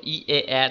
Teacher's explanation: ঠোঁটের আকৃতি ওষ্ঠ আর অধর যদি প্রসারিত হয়ে যায়, স্প্রেড করে যায়, ই, এ, প্রসারিত স্বরধ্বনি উচ্চারণ করো। ই, এ, দেখো ঠোঁট দুটো প্রসারিত ছড়িয়ে থাকছে